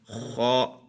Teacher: حلق کے اوپر والے حصے سے ادا ہو جائے